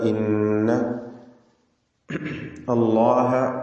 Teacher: ഇസ്മുൽ ജലാല, തഫ്ഖീം ചെയ്തുകൊണ്ട് ലാമിന ഉച്ചരിക്കുക